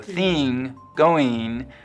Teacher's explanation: the kit vowel is being split in two before ng it's likely to sound like e